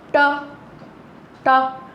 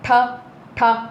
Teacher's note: ठीक है, एक तरह से आप इनको बोल सकते हैं जो दांतों की जो जड़ होती है ना, हमारे दांतों की जो जड़, ये वाला हिस्सा ऊपर वाला, ये हमारा मूर्धन्य कहलाता है। तो ये हमारे ट, ठ, ड, ढ, ण कहाँ लग रहे हैं? जाके दांतों की जड़ों में और तालु के नीचे। · अब देखो इनको जब आप उच्चारित करोगे ना 5 वर्णों को, तो जो ये जीभ है हमारी मूर्धा से टकराएगी जाके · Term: मूर्धन्य वर्ण